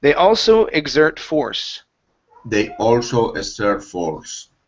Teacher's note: instead of expert, the word is exert. The stress is on the end. Okay, it is, they also exert force.